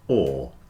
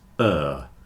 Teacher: this is an unusual word because you would think the o r in the middle would be pronounced or but when it's coming after the W it's uh so word rhymes with third and bird so there are three